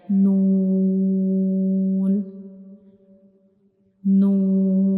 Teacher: the sound of noon comes from the nose, like noon, noon.